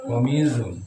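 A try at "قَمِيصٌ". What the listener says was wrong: Komisun. Enggak, bukan za. Komisun.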